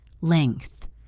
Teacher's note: For length, remember that NG and TH are both team sounds. The NG flows like singing, and the TH breathes out softly. Leng, and then a soft breath.